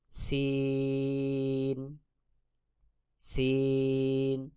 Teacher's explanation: জিহ্বার আগা সামনের নিচের দুই দাঁতের পেট ও আগার সঙ্গে লাগাইয়া সিন সিন